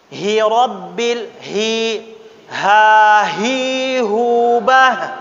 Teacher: Kalau ha dari bawah, aqsa, ya, aqsa al-halq, bawah tenggorokan.